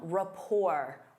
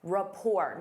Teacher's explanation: Notice that T is silent.